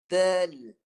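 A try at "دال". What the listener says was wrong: Panjang sikit alif tu.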